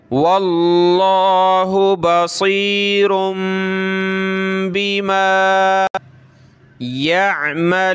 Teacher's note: لفظ اللہ کو موٹا کریں گے کیونکہ واو پہ زبر ہے